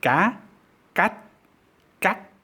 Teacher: there is no audible release because there's no actual final sound but the vowel sound is constricted in some way and so each syllable has a different quality and are discernible